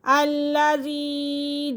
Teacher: یا ایہا الناس اعبدوا ربکم الذی خلقکم، پہلا قاف موٹا اور اگلا کاف باریک، خلقکم، والذین من قبلکم، با کے پر قلقلہ ہو رہا ہے، ٹھیک ہے، من قبلکم لعلکم تتقون الذی جعل لکم الارض، الذی، یا ساکن سے پہلے زیر تو یا مدہ، اسے تھوڑا سا کھینچ لیں گے، الذی جعل، تینوں کے پر حرکات ہے تو حرکات کو کھینچتے نہیں ہیں، جھٹکا نہیں دیتے۔